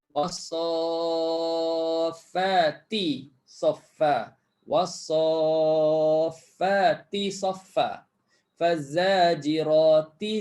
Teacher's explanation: Kita baca hafs, kita kena hidupkan ta tu sebab ta berbaris. Bunyi ti sebab ta berbaris. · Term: bacaan hafs